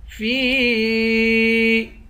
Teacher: فا کو یا سے ملا کر یا کو ایک الف کی مقدار کھینچیں گے اور اس پر مد ہے، اس مد کو تین الف کی مقدار کھینچ کر پڑھیں گے۔